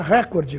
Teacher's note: ouve-se cotidianamente a forma Record com uma tonicidade na anti penúltima sílaba portanto como proparoxitono porém essa forma não está registrada nos dicionários e no vocabulário